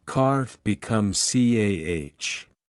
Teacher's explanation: In received pronunciation, RP, the R at the end of words is silent unless followed by a vowel. For example, car becomes CAH. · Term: silent R